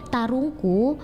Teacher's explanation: e-nya itu akan berubah menjadi a dalam bahasa Bugis menjadi palita. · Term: pengubahan fonem e menjadi a